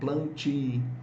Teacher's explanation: Somente a palavra plantio não vai ter a sílaba tônica com vogal nasal, porque a sílaba tônica é o ti. Palavra paroxítona, plantio.